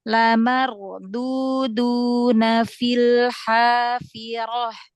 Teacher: Nah, huruf dal itu jangan tebal, jangan seperti dod ya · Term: dal ditipiskan